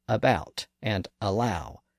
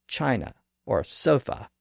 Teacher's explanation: it's easy to just use this generic uh sound in the middle of the mouth